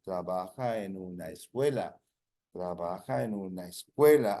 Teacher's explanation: You link trabaja en una escuela. That sounds all as one word.